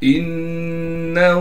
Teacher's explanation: حمزہ کو نون سے ملائیں گے غنہ کے ساتھ، اس لیے کہ نون پر تشدید ہے · نون کے بعد ہا پر الٹا پیش ہونے کی وجہ سے ہا کو ایک الف کی مقدار کھینچیں گے